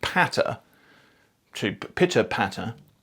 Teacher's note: when you say something like patter, to pitter patter, there's this puff of air that comes out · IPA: pʰ